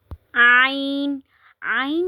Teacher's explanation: ऐन जो है यह भी वस्त हलक से अदा होता है। हरूफ हल्की में से है। · عین جو ہے یہ بھی وسط حلق سے ادا ہوتا ہے، حروف حلقی میں سے ہے. جہاں سے ہا ادا ہوتا ہے وہاں سے عین بھی ادا ہوتا ہے، یعنی کہ حلق کے درمیانی حصے سے، جسے وسط حلق بھی کہتے ہیں.